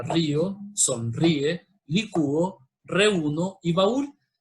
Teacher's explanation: a diferencia de los diptongos, estas no van juntas, sino que las separamos. O sea que cada sílaba forma, cada letra forma una sílaba totalmente diferente. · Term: hiato